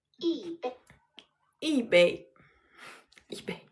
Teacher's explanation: Notice that the tone changes from the first tone 一， to the fourth tone.